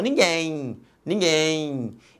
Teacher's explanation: no final este M representa um ih aqui representado foneticamente pela letra Y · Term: ditongo fonético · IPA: |Y|